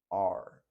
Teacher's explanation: se produce cuando uno toma la punta de la lengua y la dobla la lengua hacia atrás de modo que toque el cielo del paladar la parte de arriba de la boca paladar y ahí se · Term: r retroflex